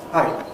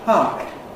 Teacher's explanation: Glottal stop at the end in Japanese. Japanese, short vowel gets a glottal stop after it. English doesn't.